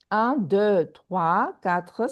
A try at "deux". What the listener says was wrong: Deux, trois, quatre